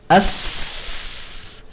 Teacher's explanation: একই সাথে আমরা এটা বোঝার জন্য, অর্থাৎ এই সিফাতটাকে বলা হয় হামস, এটা বোঝার জন্য গলায় হাত দিয়ে ধরে দেখতে পারি এই হরফটা উচ্চারণের সময় গলায় ভোকাল কর্ডসে কোনো ধরনের কম্পন অনুভব করব না, কারণ ভোকাল কর্ডস ওপেন থাকে, ভোকাল কর্ডসের যে তারগুলো সেগুলো ওপেন থাকে এবং ওপেন থাকার কারণে বাতাসটা স্বাচ্ছন্দ্যে বের হয়ে আসে, তাই গলায় কোনো কম্পন অনুভূত হবে না।